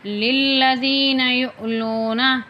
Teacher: یا حمزہ پہ یو پڑھا جائے گا، ہلکا سا جھٹکا بھی دیا جائے گا